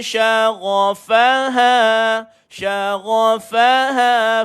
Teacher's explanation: jadi G ni duduk dekat hujung kerongkong